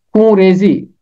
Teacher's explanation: فارسی زبان کا یہ مرکب لفظ ہے، اور فارسی میں تو نون کے ساتھ پڑھا جاتا ہے اور نون کا نقطہ بھی لگتا ہے، مگر اردو میں ہم اسے پڑھتے ہیں خون ریزی، نون غنہ کے ساتھ پڑھتے ہیں